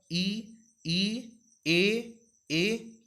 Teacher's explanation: जब आप ई, ए बोलेंगे तो आपकी जो जीभ का आगे का भाग होगा वो थोड़ी से आगे की तरफ जाएगा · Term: अग्रस्वर